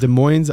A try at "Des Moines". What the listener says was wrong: Des Moines. You don't pronounce the S. It's Des Moines, Iowa.